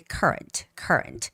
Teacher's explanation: So it's current with the first syllable stress. The stress goes on you, so it's got to be current, current.